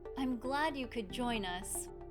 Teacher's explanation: Glad is an adjective that carries meaning and conveys emotion. We definitely want to emphasize it. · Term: word prominence